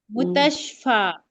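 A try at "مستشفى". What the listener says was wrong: दो शीन नहीं है, एक सीन है, ठीक है। मुस, पहले मुस बोलना है, फिर तश बोलना है।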